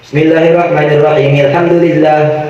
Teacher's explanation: Bismillahnya disambung ke Al-Fatihah, al-nya nggak dibaca.